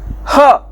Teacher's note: तो ह नाम का जो वर्ण है ह, तो इसका उच्चारण करते समय ह या वर्णाचा उच्चारण करताना या उच्चार करताना फुफ्फुसातील हवा तोंडावाटे जोराने बाहेर फेकली जाते, म्हणून त्याला महाप्राण असे म्हणतात। अब ह का जब हम उच्चारण करते हैं तो ज्यादा मात्रा में हवा फेफड़े से निकलकर बाहर निकलती है, तो इसीलिए हम उसको महाप्राण कहते हैं।